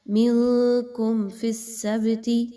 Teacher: میم ساکن کے بعد فا آ گئی، یہاں پر میم پر بالکل بھی غنہ نہیں ہوگا، اظہار شفوی ہوگا